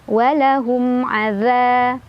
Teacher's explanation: Za mad tabi'i karena ada alif sebelumnya ada fathah dibaca panjang 2 harokat.